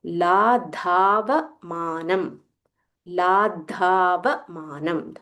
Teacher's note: So there is a half the followed by full Mahaprana dha.